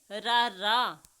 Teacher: ਉਹ ਵਿਅੰਜਨ ਜਿਹਦੇ ਉਚਾਰਨ ਸਮੇਂ ਜੀਭ ਵਿੱਚ ਕੰਬਣੀ ਭਾਵ ਥੋੜ੍ਹੀ ਜਿਹੀ ਹਲਚਲ ਆਉਂਦੀ ਹੈ। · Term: ਕਾਂਬਵਾ ਵਿਅੰਜਨ